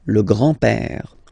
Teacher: remember, E accent grave like that, it's this open père